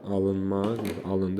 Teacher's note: Onda vurğu əvvəldə olur, əmr formasında olanda. Amma digər formada alınmaq formasında olanda, yəni feilin məhsul növü olanda vurğu ında olur.